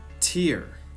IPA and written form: tɪr (tear)